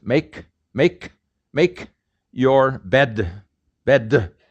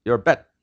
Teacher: here but the reason is consonants are not released in korean a consonant at the final is not released uh make your bed in english we release the consonants make